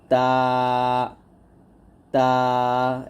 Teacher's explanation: জিহ্বার আগা সামনের উপরের দুই দাঁতের গোড়ার সঙ্গে লাগিয়ে